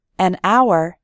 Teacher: in the word hour, the h is silent, so we say an hour